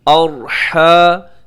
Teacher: را موٹا پڑھا جائے گا کیونکہ را ساکن سے پہلے زبر آ گئی ہے